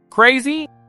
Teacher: By just echoing the word crazy with a rising intonation